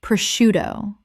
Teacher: The SC makes an SH sound in Italian, which English has kept.